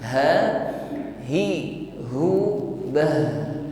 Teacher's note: huruf ha sukun nampak sifatnya rakwa alirkan bunyi hurufnya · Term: rakhawah